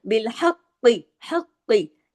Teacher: कॉफ को यहाँ पर हैवी भी पढ़ना है और कॉफ को यहाँ पर तशदीद की वजह से डबल भी पढ़ना है।